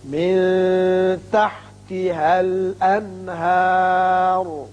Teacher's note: من کے نون ساکن پر اخفاء حقیقی ہوگا، شاباش، الانہار نون پر اظہار حلقی ہوگا کیونکہ اس کے بعد حروف حلقی میں سے ہا آ رہا ہے۔